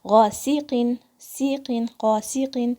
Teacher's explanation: सीन को सफीर के साथ अदा करना है आपने। कसरा को क्लियर करना है। · قاف کے نیچے کسرتین ہیں, 2 زیر. تھوڑی سی آواز قاف کی لائٹ ہو جائے گی کسرہ کی وجہ سے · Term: قاف کی آواز